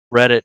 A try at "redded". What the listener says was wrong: REDDED, not IT. Redded out.